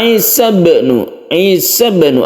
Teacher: ada sukun ba yang ada di tengah-tengah ayat maka kita sebut dengan qalqala Sugra kita pantulkan